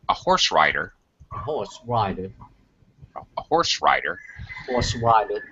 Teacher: We're actually describing rider, a horse rider. So there should be more emphasis on rider than the adjective to describe it